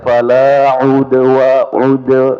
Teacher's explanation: dal qalqalah di sini qalqalah sugra ya jadi ee bukan udwana tapi digetarkan sedikit ya fala udwa wa ud ya fala udwana illa ya kemudian illa ya tidak terlalu lama pada lam bukan kan illa ya.